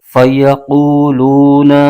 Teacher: قاف پر پیش ہے اور آگے واو ساکن، یہاں پر واو مدہ ہو رہا ہے، اس کو ایک الف کھینچ کے پڑھیں گے۔ قاف حروف مستعلیہ کا حرف ہے، اس کو پر یعنی موٹا کر کے پڑھیں گے۔ لام پر پیش ہے اور آگے واو ساکن ہے، یہاں بھی واو مدہ ہو رہا ہے، اس کو بھی ایک الف کھینچ کے پڑھیں گے۔